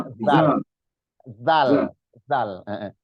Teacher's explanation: za itu adanya di ujung bibir bukan zai tapi zal di zal ya zal zal zal.